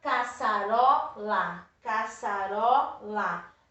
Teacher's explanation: É o ró. A sílaba mais forte. Não é a última, é a penúltima. Se é a penúltima, é paroxítona.